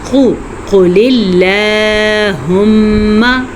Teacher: ٹھیک ہو گیا، ہم نے اس میں اللہ کا نام باریک پڑھا، قاف پہ پیش ہے اسے کم مقدار کے ساتھ پڑھا اور قاف کو موٹا پڑھا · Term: قاف موٹا